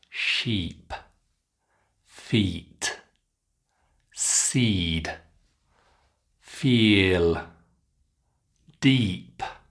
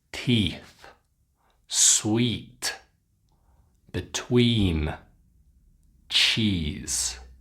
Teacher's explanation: You can see in the picture again what I'm talking about. The sides of the back of the tongue, they're touching the upper top teeth. And you make that beautiful E. It's a longer E sound. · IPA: /iː/